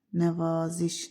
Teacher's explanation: Nəvaziş sözündə A uzanır.